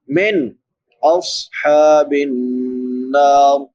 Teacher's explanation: نون ساکن کے بعد حروف حلقی میں سے حمزہ ہے تو یہاں پہ اظہار ہوگا، صاد اور بھی پڑھا جائے گا اور سیٹی کے ساتھ بھی ادا ہوگا، حروف مستعلیہ میں سے بھی ہے اور حروف صفیریہ میں سے بھی ہے، سیٹی والے حروف۔